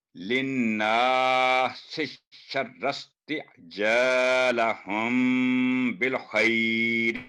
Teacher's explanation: تو میم ساکن کے بعد جب بھی با ہوگا تو میم پر 2 سیکنڈ کا گنہ ہوگا، اس لیے ہم نے یہاں میم کی آواز لمبی کی۔ ہر جگہ میم لمبی نہیں ہوگی، یا تو میم ساکن کے بعد با ہو یا میم پر تشدید ہو یا دو میم آپ کو اکٹھے نظر آ جائیں تو پھر میم کی آواز لمبی کرتے ہیں، ورنہ اور کہیں آواز میم کی لمبی نہیں ہوتی.